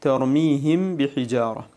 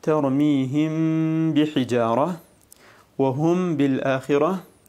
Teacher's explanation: فتخفى الميم عند الباء مع بقاء الغنة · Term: الإخفاء الشفوي